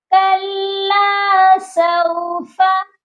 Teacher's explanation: تو لام کے ساتھ الف مدہ ہے، اس کو ہم نے ایک الف کے برابر لمبا کر کے پڑھنا ہے